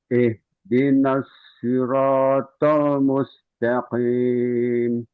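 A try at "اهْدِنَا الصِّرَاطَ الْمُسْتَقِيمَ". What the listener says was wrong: Rnya kurang tebal, tanya juga kurang tebal.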